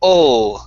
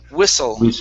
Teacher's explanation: with the l sound at the end of that word instead of saying wissu with an oo it's ol so curve your tongue up